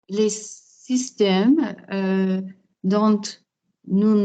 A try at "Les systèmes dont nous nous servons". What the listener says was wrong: don't be saying don't. Les systèmes dont.